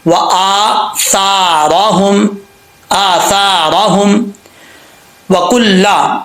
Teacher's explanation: तो यहाँ पर रा के ऊपर जबर है, इसको पुर पढ़ेंगे, व आसारहुम, आसारहुम वकुल्ला, वाव को पढ़ते वक्त होंठ गोल करेंगे, अगर होंठ गोल नहीं होंगे तो सही तरीके से नहीं इसकी अदायगी होगी। · अगर रा के नीचे जेर हो, रा साकिन से पहले जेर हो तो रा इन दो हालतों में बरीक पढ़ा जाता है। तो यहाँ पर रा के ऊपर जबर है, इसको पुर पढ़ेंगे